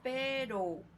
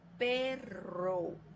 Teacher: ambos son sonoros y alveolares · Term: vibrante simple